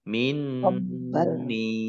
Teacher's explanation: nun tasdid dibaca runah atau mendengung ditahan 2 harokat. Nun kasroh ya sukun mat tabi'i panjang 2 harokat.